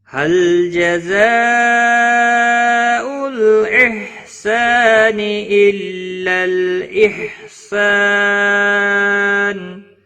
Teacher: مد متصل 5 الف کے برابر کھینچ کر پڑھیں گے